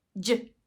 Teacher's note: a combination of a stop sound with a fricative